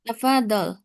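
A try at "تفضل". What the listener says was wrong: Nah, pengucapan tafadhol kurang ditekan ya. Tafadhol. Tafadhol. Ya, itu tadinya kan tasdid.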